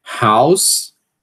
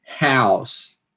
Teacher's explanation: esse A desse ditongo, ele vai mais para frente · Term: vogal anterior